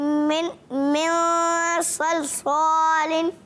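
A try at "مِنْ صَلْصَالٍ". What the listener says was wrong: सौद सही से नहीं पढ़ा या इकफा नहीं किया? अच्छा मन कर दिया, मन सलसालिन पढ़ दिया।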